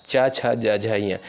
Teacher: च छ ज झ य इनका उच्चारण स्थान होता है तालू